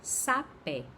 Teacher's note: Quando eu pronuncio, eu percebo que tem um acento agudo no E. Nesse E, esse E é a minha vogal tônica e o A fica sendo a vogal átona.